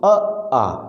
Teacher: कंठस्वर में कौन कौन से स्वर रखे हैं दोस्तों, अ, आ। आप इनका उच्चारण करेंगे तो आप पाएंगे कि आपके कंठ से इन स्वरों का कंठ पर प्रेशर पड़ रहा है।